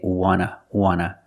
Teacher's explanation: we don't pronounce the T and we say wanna